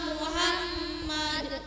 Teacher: Mim doma dibaca u bukan o.